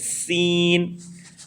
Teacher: जबान की नोक दोनों दांतों के अंदरूनी हिस्से से अदा कर देंगे। · زبان کی نوک دونوں دانتوں کے اندرونی حصے سے ادا کرتے ہیں